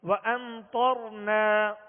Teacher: طا حروف مستعلیہ میں سے ہے، پر پڑھیں گے، موٹا پڑھیں گے